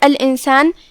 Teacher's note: ہم نون کو بغیر ظاہر کیے ہوئے لیکن غنہ کے ساتھ یہ حکم کو ادا کریں گے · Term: اخفاء